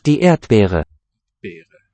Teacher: It's not really a voiced B.